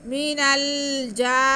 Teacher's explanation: آگے جیم پہ کھڑا زبر ہے اسے ایک الف کے برابر کھینچیں گے